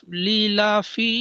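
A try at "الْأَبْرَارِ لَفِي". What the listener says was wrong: আবরলি হবে না, এখানে র আছে, র আছে, রি হয়।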